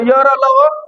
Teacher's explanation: ठीक, चलिए, तो य र ल, इसको अर्ध स्वर भी कहा जाता है। इस र को प्रकंपित भी बोला जाता है, ल को पार्श्विक भी बोला जाता है